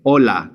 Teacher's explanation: We don't pronounce the H whatsoever. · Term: the H is silent